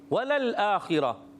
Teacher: آخرہ خا کے نیچے زیر ہے, باریک کریں گے مگر کس کو, خا کو تو باریک کریں گے نہیں, حرف مستعلیہ سے باریک نہیں کریں گے